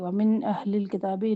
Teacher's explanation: ومن اہل الکتاب نون ساکن کے بعد حمزہ اظہار کریں گے.